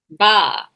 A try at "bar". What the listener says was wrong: I don't hear the R. It sounds like you're saying what a sheep says.